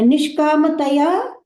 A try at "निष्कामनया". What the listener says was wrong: निष्कामतया नहीं, निष्कामनया, निष्कामनया, कामतया नहीं है, क्योंकि कामना का तृतीय है वो। तो निष्कामतया नहीं हो, निष्कामत निष्कामेन करके हो जाएगा, निष्कामत्वेन हो जाएगा अगर पुल्लिंग होता तो। तो निष्कामनया ही है, कामना का तृतीय है